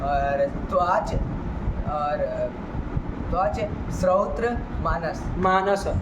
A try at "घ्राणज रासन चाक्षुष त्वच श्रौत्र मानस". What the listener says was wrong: है ना, बीच में और नहीं करना है, खट से निकल जाना है। घ्राणज रासन चाक्षुष त्वच श्रौत्र मानस, खत्म खेल। इधर उधर करेंगे ना तो फिर गड़बड़ा जाए।